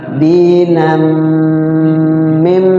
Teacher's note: ya tanwinnya nunnya dimasukkan ke mim, di mim ditahan. Ada jeda, jangan terburu-buru. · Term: Idgham bi gunnah